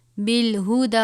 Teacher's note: دال کے اوپر کھڑا زبر ہے، ایک الف کے برابر پڑھیں گے